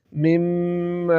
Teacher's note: کے ساتھ پڑھیں گے مم میم کے بعد الف ہے تو میم کے اوپر جو زبر ہے اس کو ایک الف کے برابر کھینچ کر پڑھیں گے تاکہ الف کی اواز نکل ائے